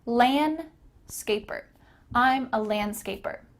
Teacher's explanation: Notice that the D here is kind of cut out.